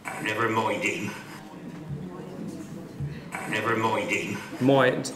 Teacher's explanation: The price diphthong sounds a bit more like choice.